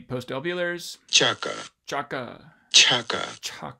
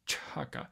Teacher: you just kind of have to have the cha and then a huh after it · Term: aspirated affricate